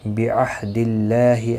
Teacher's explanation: اللہ کا لام زیر کی وجہ سے باریک پڑھا جائے گا، اس کے اوپر کھڑی زبر بھی ہے، ایک الف کی مقدار کے برابر کھینچ کر پڑھیں گے.